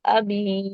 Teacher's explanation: با کے ساتھ یا مدہ ہے، ابھی، اس کو بھی 2 کاؤنٹس کھینچ کے پڑھیں گے